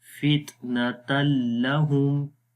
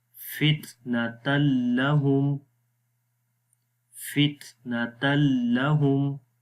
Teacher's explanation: اب تنوین کے بعد جب لام آئے گا تو وہاں پر بھی ادغام بلا غنہ ہوگا، غنے کے بغیر، کوئی غنہ نہیں کریں گے. تو پڑھیں گے فتنۃ لہم.